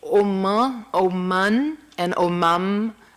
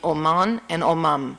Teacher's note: there's no difference in the pronunciation of the two consonants in this case. They just produce the nasalization of the vowel and are used rather arbitrarily in our Portuguese.